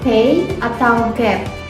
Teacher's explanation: bagian tertentu di dalam mulut sepenuhnya tertutup lalu udara dilepaskan dengan cepat menyebabkan suara ledakan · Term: hentakan